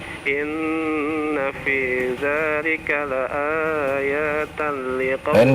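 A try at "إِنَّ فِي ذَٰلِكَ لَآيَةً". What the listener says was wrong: Pendek, iya-nya pendek. A-nya yang panjang.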